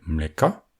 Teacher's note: En revanche, dans le pluriel mleka, c'est le a final qui est accentué. L'ancien yak est donc devenu un e.